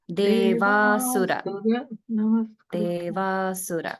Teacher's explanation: The sura is sounding like dirgha, but it's actually a hrasva su.